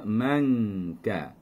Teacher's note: kita angkat pangkal lidah sehingga menyentuh hampir dengan makhraj kaf. Jadi bunyinya manka.